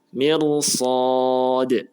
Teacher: Setelah ra sukun ada huruf shad yang berharokat fathah ya, atau bukan kasroh kan. Nah, maka ra-nya dibaca dengan bacaan tebal ya, meskipun huruf mimnya itu berharokat kasroh